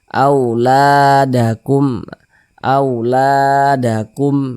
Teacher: Mad tabi'i panjangnya 2 harokat. 2 harokat itu untuk lebih mempermudah kita dalam belajar, kira-kira 2 ketukan, 1, 2.